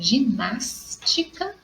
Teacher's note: a palavra ginástica, que a minha sílaba tônica é no nas, como é a terceira, ela é uma proparoxítona